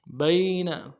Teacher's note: کھینچیں گے، لِمَا بَيْنَ، با کو یا کے ساتھ ملانا ہے، یا لین ہے، بغیر کھینچے پڑھیں گے